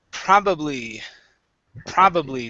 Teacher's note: nice and strong pro stressed at the very beginning